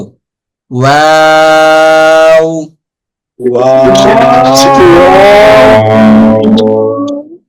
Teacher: দুই ঠোঁট গোল করে সামান্য খোলা রেখে উচ্চারিত হয় ওয়াও